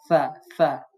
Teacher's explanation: সা নরম ভাবে পড়তে হবে, সিন এবং শিন এর ন্যায় তাকে কঠিন স্বরে পড়বেন না। সা সবসময় জিহ্বার আগা উপরে দাঁতের সাথে লাগিয়ে নরম করে পড়বেন।